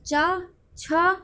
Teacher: स्पर्श संघर्षी जो है वो चा वर्ग है, क्योंकि ये संघर्ष करके हमारे मुख से निकलता है